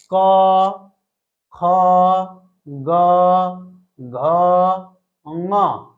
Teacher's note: क वर्ग वाले इनका उच्चारण स्थान कंठ है